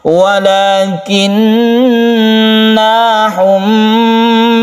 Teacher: jadi ditahan ketika kita itu mendengungkan mim. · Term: gunnah musyaddada